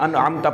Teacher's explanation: انعمت میں نون کے اوپر بھی قلقلہ کر بیٹھتے ہیں، یعنی جھٹکا دیتے ہیں، انعمت پڑھ دیتے ہیں، اور انعمت میں واضح کر کے وہ اظہار نہیں کرتے ہیں، ٹھیک ہے نا۔